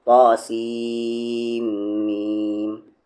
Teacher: اسی طریقے سے یہاں پر دیکھ لیں طاسیم میم، سین کو کھینچتے ہوئے اس میم میں ملائیں گے اور غنہ کریں گے، یہاں پر سین نہیں پڑھنا ہے، آپ کو سیم پڑھنا ہے